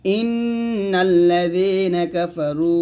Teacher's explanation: ইন্নাল্লাযীনা ইন্নাল হামজা নুন জেরি ইন এটা ওয়াজিব গুণনা, নুন কে লামকে ধরবে, তাহলে হবে ইন্নাল্লাযীনা কাফারু কাফ জবর কাফ ফা জবর ফা র ওয়াও পেশ রু পেশের পর জজমুল্লাহ ওয়াও, এখানে মাদ এক লিপ টান দিবেন